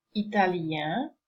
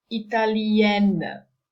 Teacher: the masculine form has a nasal sound at the end, italien, whereas the feminine form no longer has a nasal, but you have N, italienne